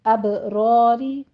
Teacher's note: کتاب الابراری ابراری با کے اوپر قلقلہ کیجیے، را میں الف مدہ ہے اور یہ را پر پڑی جائے گی، جبکہ اگلی را کسرہ والی ہے وہ باریک پڑھنی ہے